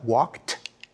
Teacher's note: when we say he walked we pronounce the Ed like a t like a t walked when we say jogged we pronounce it